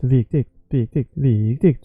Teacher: So it doesn't matter if you say it quickly, you keep the proportion of the first syllable stretched.